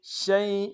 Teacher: بکل شیء، شین کو یا کے ساتھ ملانا ہے، یا لین بغیر کھینچے پڑیں گے، حمزہ کے نیچے تنوین غنہ کریں گے